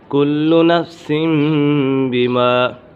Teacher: کل نفس بما کسبت رہینہ، کل نفس بما، یہاں پر اقلاب کا قاعدہ لگ رہا ہے کیونکہ تنوین کے بعد با حرف اقلاب میں سے ہے، کیونکہ نون ساکن تنوین کے بعد حرف با جو اقلاب ہوگا، یعنی نون ساکن اور تنوین کو میم سے بدل کر، یہ جو چھوٹی میم لکھی ہوئی ہے تنوین کے نیچے، اسے میم سے بدل کر اخفا کریں گے، یعنی غنہ کر کے پڑھیں گے، یہاں پر غنہ ہوگا۔